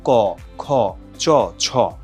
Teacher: অঘোষ হচ্ছে যেটা উচ্চারণের সময় এই স্বরতন্ত্রী অনুরণিত হয় না, কেঁপে ওঠে না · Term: অঘোষ ধ্বনি